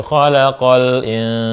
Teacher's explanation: lamnya dibaca jelas tanpa ditahan. Tanpa dipantulkan. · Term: al-qamariyah